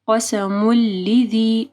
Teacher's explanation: قسم لذی، یہاں پہ ادغام آ رہا ہے، میم کے اوپر دو پیش ہیں، اس کے بعد لام ہے، ٹھیک ہے، تو یہاں پہ ہم لوگ میم کو لام کے ساتھ ملائیں گے